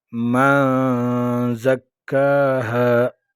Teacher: من نون ساکن میں غنہ اخفا ہوگا، نون ساکن ہے اور اس کے بعد 15 حروف میں سے زا آئے ہیں، یہاں غنہ اخفا ہوگا.